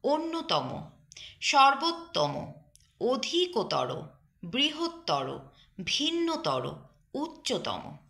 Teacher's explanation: তর তম প্রত্যয়ান্ত বিশেষণ পদের শেষ অ প্রায়শই ও এর মতো উচ্চারিত হবে।